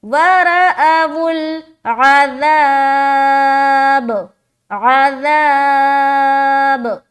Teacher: تو را میں ہم کھینچتے ہوئے، با میں ہم اسٹاپ ہو رہے، تو یہاں پر ہم الف مدہ کریں، با کے اوپر پھر زبر ہے، یہاں پر اسٹاپ کا کوئی سائن نہیں بنا ہوا ہے لیکن ہم یہاں تک رک رہے تو بتا رہے کہ با میں قلقلہ کرتے ہوئے رکیں گے